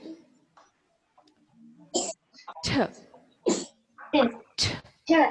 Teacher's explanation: You have to place the tip of your tongue at alveolar ridge to pronounce the sound T.